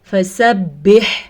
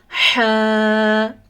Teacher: हा निकलता है हलक के दरमियान वाले हिस्से से। हलक का मतलब गला, गले के दरमियान वाले हिस्से से हा निकलता है।